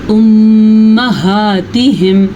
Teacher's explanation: मीम के ऊपर शद आई है तो फिर से मीम का गुन्ना ज़रूर अदा करना है